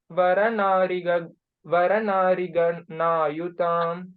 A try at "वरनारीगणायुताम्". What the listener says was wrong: that it's a dirgha, no? So you pause over there, then that tune will be Vananari Gana Yutam Gana. So wherever there is dirgha, if you hold on to dirgha, then the tune fits in correctly.